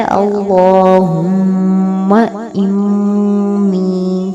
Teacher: میم تشدید کے اوپر غنہ کیا جائے گا